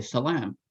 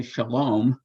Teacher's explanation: the most famous shift in Canaanite is the shift of a long A to O